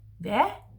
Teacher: Young people today would say hvad, so with a flat A instead.